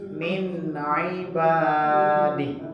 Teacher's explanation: Huruf ain tadi ingat di tengah tenggorokan ya